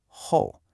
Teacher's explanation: that's a falling, rising third tone. This one can be tricky. You start mid-range, you dip down, and then you rise back up. Ho. A very common mistake is to flatten it out or not to complete that dip.